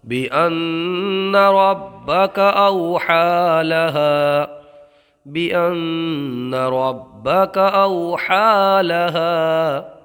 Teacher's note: نون میں غنہ ہوگا اس لیے کہ نون مشدد میں ہمیشہ غنہ ہوتا ہے. الف میں مدہ ہوگا، یہاں پر بھی الف میں مدہ ہوگا.